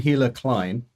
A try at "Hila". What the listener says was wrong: I think it's Ela, actually. H is silent.